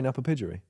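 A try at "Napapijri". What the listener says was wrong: Why would I pronounce the J?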